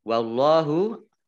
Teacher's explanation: Allahnya dibaca tebal karena harokat depannya fathah